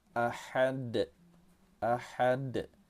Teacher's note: Huruf dal terletak di akhir kata, kita pantulkan cara membacanya. Nama hukum tajwidnya ialah qalqalah kubra.